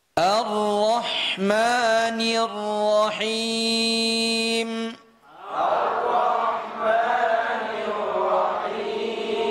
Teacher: Ra-nya mufakham. Mufakham ni artinya tafkhim, ditebalkan. Kemudian ra itu sifatnya takrir. Takrir hanya di ujung lidah